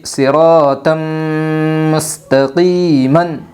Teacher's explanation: ادغام مع الغنہ ہوگا دو زبر تنوین کے بعد۔ یمن کے 4 حرفوں میں سے میم آئی ہے، اس لیے دو زبر تنوین کو غنہ کے ساتھ ملا کر پڑھے گے